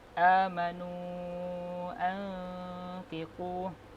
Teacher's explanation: nun mati berjumpa dengan fa, hukum bacaannya adalah ikhfa hakiki, dibaca secara dengung